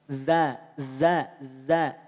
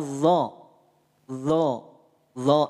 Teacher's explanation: bukan dari bibir yang maju bukan dari bibir yang Monyong Makanya tidak perlu dimonyongkan bibir kita tidak perlu dimanjukan bibir kita tapi diangkat pangkal lidah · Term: istila